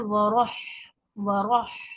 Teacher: रॉ को मोटा पढ़ेंगे, रॉ पर जबर पेश होता है तो रॉ को मोटा पढ़ते हैं